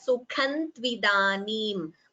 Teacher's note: Anuswara followed by ta. Optionally, you could combine the sandhi and chant it as Sukhan tvidanim.